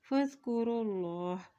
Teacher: अल्लाह के नाम से पहले पेश आ गया है तो अल्लाह का नाम मोटा अदा करेंगे